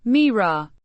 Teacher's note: with the stress on the first syllable and a slight rise in pitch